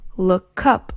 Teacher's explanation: look up is pronounced look up it sounds like the K is part of the up